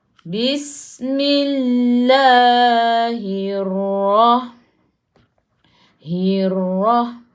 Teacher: Sebab sebelum lafzul jalalah, sebelum kalimah Allah, ada baris bawah. Jadi kena baca nipis. Jadi bunyinya nipis lah, bukan Allah.